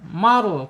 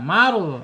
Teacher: Ketika ro sukun ee harus dibaca tebal.